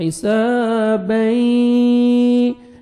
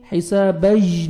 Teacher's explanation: تو آپ نے نوز میں ساؤنڈ لے کے جانا ہے. ادغام کریں گے غنہ کے ساتھ